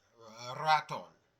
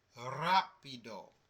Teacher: When you have the R at the beginning of a word, that R sounds just like the double R